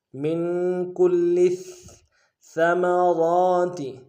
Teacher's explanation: ساتھ ملانا ہے، لام کے اوپر تشدید زور دیں گے، اور لام کو آگے ثا کے ساتھ ملانا ہے، ثا کے اوپر تشدید زور دیں گے ، من کل ثمرات، ثا کو باریک ادا کریں گے، میم